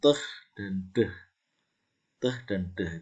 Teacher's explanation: untuk menciptakan teh dan deh, itu mesti kena kayak langit-langit yang depan, ya. Teh dan deh melibatkan itu langit-langit, ya. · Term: alveolar